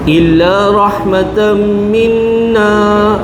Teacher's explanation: Tanwin masuk dalam mim idgham maal ghunna. Ya. Dengung dua harakat.